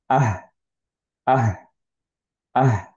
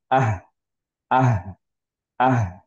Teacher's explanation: আহ যখন বলতেছি তখন অ্যাকচুয়ালি টাংটা কোনো জায়গায় টাচ খাবে না। ওকে, এবং একটা বাতাস বেরোবে, অ্যান্ড হচ্ছে যে সাউন্ডটা একটুক্ষণ ধরে রাখার আমরা ট্রাই করব, যেহেতু এটা রাখাওয়া।